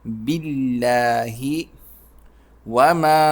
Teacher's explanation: با پر زیر ہے تو یہ لام باریک پڑا جائے گا